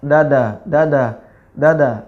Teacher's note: ujung lidah bertemu dengan langit-langit atas silakan dirasakan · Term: huruf Dal